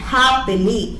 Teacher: ഇനി നെക്സ്റ്റ് വരുന്ന ഒരു ടൈപ്പാണ് ഡക്റ്റൈൽ. 1 stressed syllable followed by 2 unstressed syllable ആണെങ്കിൽ they are called dactyl.